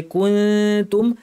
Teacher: তুবদুনা ওয়া মা কুনতুম, নুন সাকিনের পরে তা এসেছে, জিব্বাকে তায়ের মাখরাজের কাছাকাছি নিয়ে তা বলার জন্য মুখ রেডি করে নাক থেকে গুন্না করে বলতে হবে